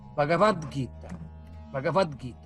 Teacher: O T, sendo surdo, não pode ficar junto com o G, que é sonoro. Então ele se transforma, agora sim, ele se transforma no G, no D, de Gita, Bhagavad Gita, Bhagavad Gita.